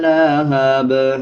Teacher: جب وقف کریں گے دونوں زیر کو سائلنٹ کر دیں گے، با پہ قلقلہ کریں گے اور با کی ساؤنڈ آدھی پڑھی جائے گی